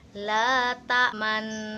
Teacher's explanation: artinya mecucu atau monyong jadi Disini Nanti kita akan mengkombinasikan kan antara harakat fathah dengan harakat dammah yang disertai dengan bibir yang monyong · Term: bacaan isymam